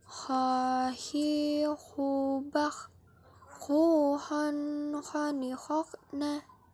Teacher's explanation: huruf ini dikeluarkan dari tenggorokan yang terdekat dari rongga mulut kita